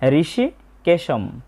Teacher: তবে শব্দের শেষে অনুস্বর থাকার কারণে আমরা অর্ধেক ম এর মত একটা উচ্চারণ করব।